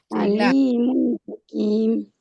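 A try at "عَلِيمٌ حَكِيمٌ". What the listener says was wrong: Very good.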